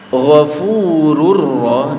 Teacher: masuk atau melebur tanpa dengung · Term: idgam bila ghunna